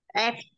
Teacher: Đây. Đưa môi dưới lên răng trên chạm vào nhau. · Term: Môi răng